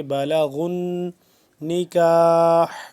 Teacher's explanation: اذا ذال کو نرمی سے پڑھیں گے. اذا بالغن غین کو موٹا پر کر کے پڑھیں گے اور نون مشدد پہ غنہ کریں گے